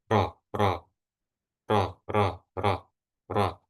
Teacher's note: dari suaranya itu bisa dikenali bahwa lidah bagian belakangnya itu enggak naik. Yang naik itu jadinya ro, yang enggak naik ro.